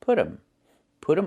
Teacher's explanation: And you hear um instead of them.